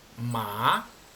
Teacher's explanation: tiene que empezar más bajo y después ir subiendo un poco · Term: tono dos